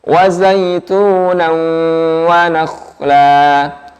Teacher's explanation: Kha-nya bersukun, jadi bulatkan sedikit bibirnya.